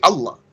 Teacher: They drop the alif and the ha.